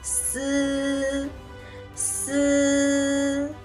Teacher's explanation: The tip of the tongue touches against the back of the upper teeth, producing s with a weak airflow, similar to s in the English word snake